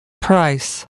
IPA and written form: praɪs (price)